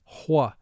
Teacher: Some people pronounce WH with a slight H sound in front